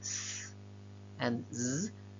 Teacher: To say s or z, we make a narrow passage between the tongue tip or the tongue blade and the alveolar ridge, and that's where the air escapes